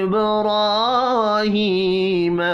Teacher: با ساکن پر قلقلہ کرنا ہے